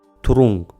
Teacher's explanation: нужно произнести «н» и оттянуть язык назад